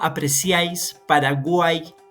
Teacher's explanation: vamos a encontrar un triptongo cuando haya la unión de una vocal cerrada una vocal abierta y una vocal cerrada al final